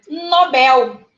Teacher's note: Bel é a nossa ênfase.